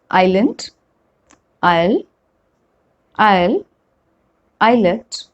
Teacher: Next one is silent letter S. S is not pronounced when it comes before L in these words.